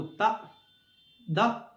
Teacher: देखिए, दांत इसमें मिल रहे हैं, ठीक है ना, इसलिए ये दंत से निकलने वाले व्यंजन हैं